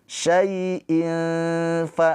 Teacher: Tanwin bertemu dengan huruf fa. Ini ikhfa hakiki. Dibaca samar tanwinnya jangan dibaca jelas izhar ya. Syaiin fa ditahan dua harakat.